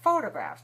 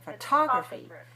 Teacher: When the stress is on the second syllable, then we put aspiration or a puff of air.